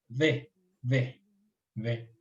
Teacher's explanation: Entonces, V, que es parecida a la F, entonces en sentido inverso, V es prácticamente, sale del sonido de unir los dientes superiores con el labio inferior